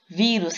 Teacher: Vi é a sílaba tônica, a sílaba mais forte, e é acentuada porque terminou em us.